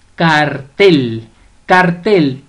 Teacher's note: cartel lleva la mayor fuerza de voz o la sílaba tónica o el acento prosódico en la última sílaba